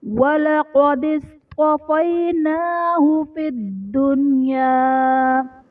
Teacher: فی الدنیا میں دال حرف قلقلہ مشدد ہے تو یہاں پر قلقلہ خوب جماؤں کے ساتھ ادا کریں گے، اور نون ساکن کے بعد دنیا میں نون ساکن کے بعد حروف یرملون ایک ہی کلمے میں آنے کی وجہ سے یہاں پر ادغام نہیں بلکہ اظہار مطلق کا قاعدہ ہوگا، یعنی نون ساکن میں ہم غنہ نہیں کریں گے۔